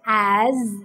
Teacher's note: another example where the letter s takes the z sound